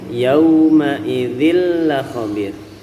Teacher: Yauma bukan yauma, murni di madlin waw, bunyinya adalah u bukan o.